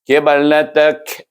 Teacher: Huruf ba adalah huruf qalqalah. Lantunan akan berlaku apabila kita matikan huruf ba tersebut. Jadi bunyinya kibalatak.